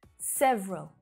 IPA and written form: 'sev rəl (Several)